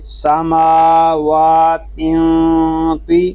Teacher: تا باریک ہے اس کو باریک پڑھیں گے، اور صرف تو اس کو پر کریں گے